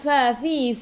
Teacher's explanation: gigi atas menyentuh perut bibir bawah